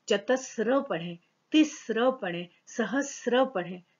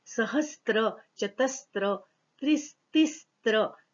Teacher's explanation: इसको कई लोग चतस्त्र बोलते हैं। ये एक्चुअली चतस्त्र नहीं है, ये चतस्र है।